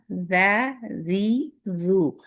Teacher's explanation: Tip of the ٹنگ اوپر کے دو دانتوں کے سرے کو لگ رہی ہے. اس میں کسی قسم کی بزنگ ساؤنڈ نہیں